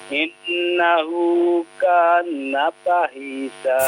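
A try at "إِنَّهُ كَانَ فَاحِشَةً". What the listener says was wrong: Fa-nya panjang ya. Innahu kana fahisyah.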